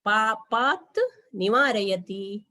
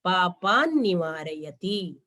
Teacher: ಅನುನಾಸಿಕ ಸಂಧಿಹಿ ತ ಕ್ಕೆ ನ ಬಂದಿದೆ